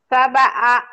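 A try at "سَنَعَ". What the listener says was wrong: Titiknya di atas. Sana'a.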